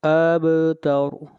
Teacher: ان شانئک، شانئک هو الابتر، با کے اوپر قلقلہ، هو الابتر، ابتر، با کے اوپر آواز کو ہلائیں گے اور را کو موٹا پڑھیں گے، اس لیے کہ را سے پہلے فتحہ آ رہی ہے